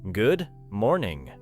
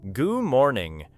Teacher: The final D may become very light because the mouth quickly moves toward the M sound.